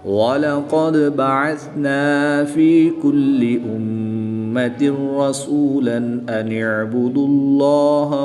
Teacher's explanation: اسم جلالت اللہ عز و جل کے لام سے پہلے حرف پر پیش ہے، اس لیے اس لام کو پر یعنی موٹا پڑھیں گے۔